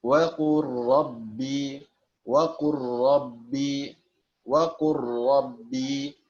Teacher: Artinya digabungkan, lamnya tidak dibaca lagi pada lafadz waqul rabbi. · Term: idgham